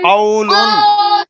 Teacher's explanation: قو کو لمبا نہیں کرنا یار واو لین ہے